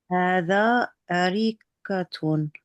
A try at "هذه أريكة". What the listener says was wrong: Yeah, good. The first time you said hada.